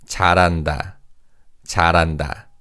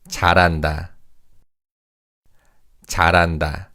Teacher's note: because of the connected speech, the 리을 받침 in 잘 carries over to the second syllable. So this is read as 잘한다.